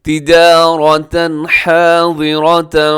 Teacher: تنوین کے بعد ہا تو یہاں پہ بھی ہوگا اظہار حلقی